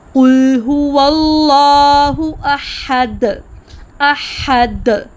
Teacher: دال جہر کا حرف ہے، جس میں زبان کی نوک اوپر دانتوں کی جڑ کے ساتھ مضبوطی سے لگتی ہیں اور سانس کا بہاؤ مکمل طور پر رک جاتا ہے، جس کے بعد ایک واضح کلکلا آواز کی گونج پیدا ہوتی ہے۔